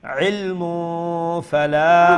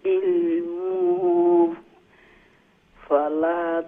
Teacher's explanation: বি মা লাইসা লাকা বিহি ইলমু যখন আপনি কন্টিনিউ করবেন তাইলে মিমের উপরে যে তানবিন আছে সেই তানবিনটাকে আপনি ইখফা করে পড়বেন